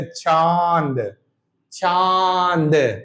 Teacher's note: नाक से भी हवा निकलेगी, मुंह से भी निकलेगी। मुंह, देखो मुंह, नाक से भी जोर पड़ रहा, मुंह से भी। · हवा नाक और मुख दोनों से निकलती है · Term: अनुनासिक